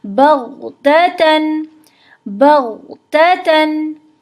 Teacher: غین ساکن حالت میں ہلتا نہیں ہے، قلقلہ حروف میں سے نہیں ہے